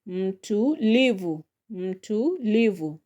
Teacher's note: So the second syllable from the end is lee so that is where you are going to put more power.